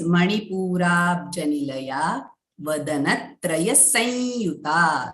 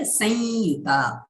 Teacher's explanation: And the anuswara is followed by yakaraha, we'll be saying the nasal halanta ya. Nasal ya sound.